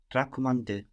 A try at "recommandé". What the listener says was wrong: You're remembering that the E changes to an A, but I think you got the wrong E or an extra E. Recommandé.